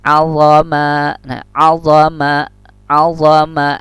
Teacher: Kalau zo itu rokhawah artinya berlalu, tidak boleh dadakan.